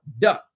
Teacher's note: There's no way to elongate the touch of the tongue to the top of your palate. Da. It's just very staccato. There's no way to elongate it.